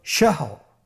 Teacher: তাহলে র শেষের অক্ষরটি সাকিন, এর আগের হরফটি হা, এটাও সাকিন এবং এর পূর্বের হরফটির উপর জবর রয়েছে। তাহলে আমরা শেষের র অক্ষরটিকে মোটা করে পড়ব।